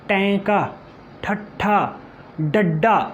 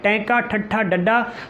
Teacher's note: ਜੀਭ ਹੈ ਤਾਲੂਏ ਦੇ ਨਾਲ ਲੱਗ ਜਾਂਦੀ ਹੈ, ਹਵਾ ਰੁਕ ਜਾਂਦੀ ਹੈ ਔਰ ਫਿਰ ਬਾਹਰ ਆਉਂਦੀ ਹੈ। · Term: ਉਲਟ ਜਿੱਬੀ ਧੁਨੀਆਂ